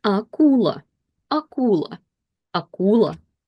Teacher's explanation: And none of it is affected by the stress that falls on U. So the stress falls on U, but A is not affected by the stress rules, so we read it exactly like we practiced with the syllables.